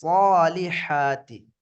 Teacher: மேல ஃபத்ஹா, அதுக்கு அடுத்து அலிஃபுல் மத்து வந்திருக்கனால முற்றிலும் மல்லினமாக தஃகீமாக ஓத வேண்டும்.